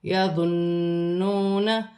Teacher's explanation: نون مشدد میں غنہ کیا جائے گا، واو ساکن سے پہلے پیش واو مدہ بن رہی ہے، اسے ایک الف کی مقدار کھینچ کر پڑھا جائے گا۔